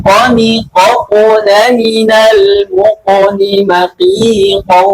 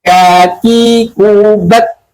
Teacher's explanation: yang pertama itu dia dibaca tebal, dan yang kedua ini huruf kaf dibaca tipis